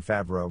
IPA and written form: ˈfævroʊ (Favreau)